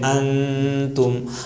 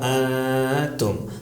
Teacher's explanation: تو اخفا میں 2 کام کرنا ہے، آواز کو تھوڑا سا چھپانا ہے اور کھینچ کے ذرا سا پڑھنا ہے، یہ ہو جاتا ہے اخفا.